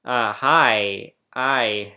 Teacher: the vowel I starts with an ah sound